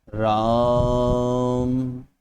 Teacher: जब हम ओम बोलेंगे तो इसे 3 गुना ज्यादा लंबा खींचना है हमें · ठीक है, तो हम कोई ना कोई स्वर पकड़कर खींचते हैं। यहां पर आ की जो मात्रा है उसे हम लंबा खींच रहे हैं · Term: प्लुत स्वर